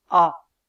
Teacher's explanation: la voyelle a de date est une voyelle antérieure c'est-à-dire qu'elle est prononcée avec la langue en avant tandis que la voyelle a de Pat